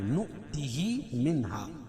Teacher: نؤتی بتایا تھا کہ حمزہ کی 4 شکل، اور حمزہ یہاں واو کی شکل میں لکھی ہے، اس پہ جزم ہے تو جھٹکا دیں گے